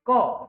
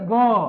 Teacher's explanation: बोलते व स्वर तंत्रिकाओं में देखिए क नो कंपन ख नो लेकिन वही देखिए ग कंपन होगा घ कंपन होगा